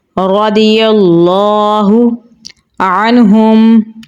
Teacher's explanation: اس کے اوپر کھڑی زبر ہے تو اسے ہم لمبا پڑھیں گے. ہا کو گلے کے نچلے حصے سے نکالیں گے